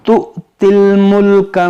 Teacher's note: یہاں پر یہ حمزہ ساکنہ ہے, اس کو جھٹکا دے کر پڑھیں گے